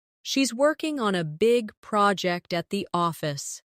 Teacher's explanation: Stress working big project and office.